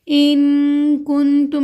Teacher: نون ساکن کے بعد کاف آیا ہے، حروف اخفا ہے تو ہم غنہ کریں گے